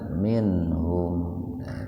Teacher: Cuman ini kan dalam satu kata jadi tidak dibaca minhum, nggak begitu. Jadi enggak sampai ditahan dua ketukan, tapi dibacanya itu sepintas saja, minhum. Beda kalau nanti terpisah gitu.